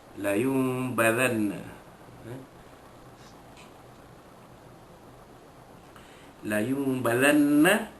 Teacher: Nun mati bertemu dengan ba, hukum dia iqlab. Menukar bunyi nun mati yang bertemu dengan huruf ba itu seolah-olah menjadi bunyi mim